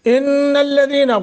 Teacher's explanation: ان الذین غنہ کریں گے، نون پر شد ہے